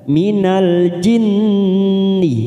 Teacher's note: nun yang bertasdid guna musaddadah, kita tekan 3 ketuk